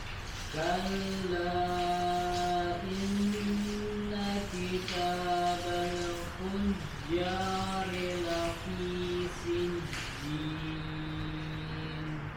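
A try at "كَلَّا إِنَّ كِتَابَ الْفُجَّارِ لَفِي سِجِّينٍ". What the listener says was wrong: Ya, kemudian di sini ada lam sukun kitabal, tidak boleh dipantulkan. Ya, tahan dulu di makhrajnya, alirkan suaranya. Kitabal fu, tidak kitabal fu, tidak dipantulkan.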